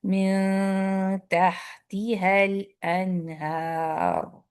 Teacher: تہ ہا پہ سکون آ گیا تو اور زیادہ ہمس واضح ہو رہا ہے. رخاوت کی وجہ سے ہمس یعنی کہ ایئر زیادہ واضح ہو جا رہی ہے.